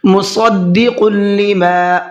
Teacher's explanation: صاد کو منہ بھر کے پڑھنا ہے اور قاف کو بھی منہ بھر کے پڑھنا ہے